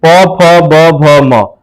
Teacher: आप बोलने पर आपका ओठ जो है, दोनों ओठ सट जाता है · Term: ओष्ठ